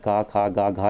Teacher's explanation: घा का उच्चारण स्थान आपका कंठ हो जाएगा। देखिए का, खा, गा, घा, यहाँ का की श्रेणी में आ रहा है, तो ये घा जो है मेरा कंठ हो जाएगा।